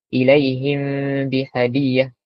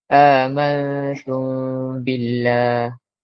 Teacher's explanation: Kita sorok huruf mim ni ke dalam huruf ba. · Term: ikhfa syafawi